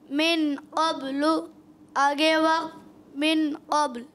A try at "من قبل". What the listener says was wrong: غنہ بھی کریں گے.